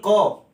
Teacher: अगर आप क कहेंगे तो इसमें अ की ध्वनि भी आएगी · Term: व्यंजन